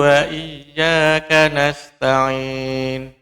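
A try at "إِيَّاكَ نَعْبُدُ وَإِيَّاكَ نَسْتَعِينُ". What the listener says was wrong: Kafnya ada sedikit udara yang keluar. Jadi ka. Jangan ya. Iyyaka.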